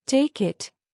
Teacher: take it is spoken smoothly without a break between take and it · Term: Linking